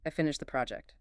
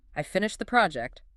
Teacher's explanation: the rising intonation makes it feel like a question. It overrides the grammar.